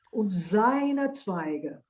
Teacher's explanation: And seine is voiced z.